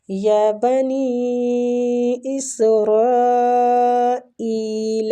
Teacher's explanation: نی پہ جو مد ہے یہ مد جائز منفصل ہو رہی ہے، اس کی کھینچنے کی مقدار 3 حرکات ہے۔